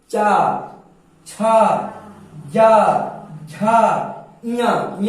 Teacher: चा जब आप बोलते हैं तो आपकी जो ये जीभ होती है, जीभ जो होगी ये आपके ऊपरी सिरा यानी आपके तालु पे, जीभ के ऊपर सिरा पे तालु की तरफ जाकर फट से लड़ती है